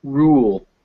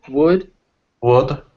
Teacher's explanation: this is the long u and the short u and it's the same thing where one is tense and the other is relaxed so we have the tense ooh written with the letter u